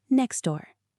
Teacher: Three consonants. It is physically difficult to say next door. You have to stop your tongue. So we delete the T.